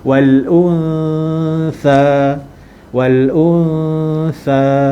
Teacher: Ikhfa hakiki. Dengung dan masukkan bunyi huruf sa. Separuh daripada bunyi huruf sa tu dah masuk dah semasa kita dengung.